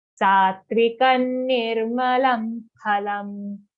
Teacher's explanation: join your lips together to say pha if you want the pure pronunciation